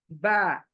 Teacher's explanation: मेरे होठों का जो गीला हिस्सा है ना अंदरूनी वो टच करने से ऊपर नीचे टच करने से ब लेटर आता है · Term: गीले होठों से